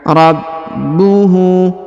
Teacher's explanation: Huruf ba perhatikan ditahan dan ditekan karena terdapat tanda tasdid atau penekanan. Rabbuhu. Kemudian huruf hu dipanjangkan 2 harokat karena berharokat u terbalik.